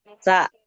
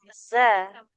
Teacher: kalau sin sa mengalir nafas. Kalau zai tertahan nafasnya.